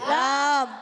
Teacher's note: لام کا مخرج ہے زبان کا کنارہ جب ضاحک سے ثنایا تک کے مسونوں سے لگتا ہے تو ادا ہوتا ہے لام۔